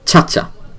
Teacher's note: here you see that the first syllable gets emphasized